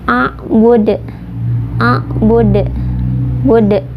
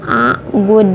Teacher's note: Kalau di akhir itu qalqalah kubro atau pantulannya besar. atau ada huruf qalqalah yang disukunkan karena waqaf.